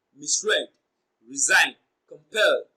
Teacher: misread, resign, and compel, they all receive their stress on their second syllables respectively